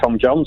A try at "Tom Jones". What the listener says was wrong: you're not saying Jo you're saying Tom Jon